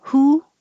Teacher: It's very similar to oo, like who, but oo, your lips are rounded, good, and would is trickier because you do have to start rounded and then unround, would. Your tongue is a little higher for the who, and who would.